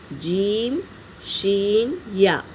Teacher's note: جیم، شین، یا زبان کا درمیانی اور تالو کے ملنے سے ادا ہوتے ہیں۔